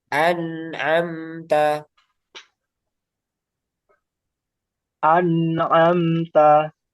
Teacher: Jadi masih ada keluar dari hidung. An, tapi sedikit. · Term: nakifah